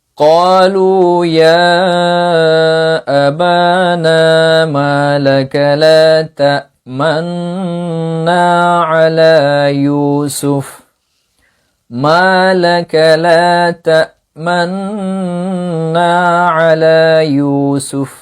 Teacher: লা তা'মান বলার পর যখন আপনি গুন্না করবেন, ইদগাম করবেন, তখন পেশের দিকে ইশারা করা। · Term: ইসমাম